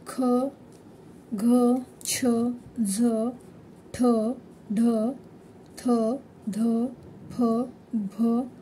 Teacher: जोरात जोरात बाहेर फेकली जाते त्यामुळे त्याला महाप्राण असे म्हणतात तर महाप्राण म्हणजेच काय तर ह ची छटा ज्यामध्ये आढळते